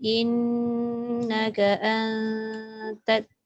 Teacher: antat In tu jangan, in tu lidah kena lekat kat dalam langit. Dia jangan renggang pula.